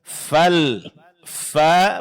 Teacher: huruf fa fal fa pengucapannya disertai keluarnya sedikit angin